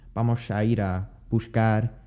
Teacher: in Spain, S's are often pronounced with the tongue higher up in the mouth, closer to the palate than the S pronounced in Mexico and some other Latin American countries.